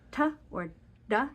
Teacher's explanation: When we say ta or da in English, we put the tip of our tongue on the roof of our mouth right behind our upper teeth. You can feel when you say ta or da, and you can see how far back my tongue is.